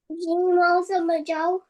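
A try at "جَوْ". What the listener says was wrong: No. 3 seconds. So we have to read with proper stretching. Please read proper stretching.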